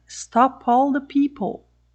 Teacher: Este P aqui você vai ouvir por causa da palavra seguinte, que é a palavra all, começando com o som vogal. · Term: liberação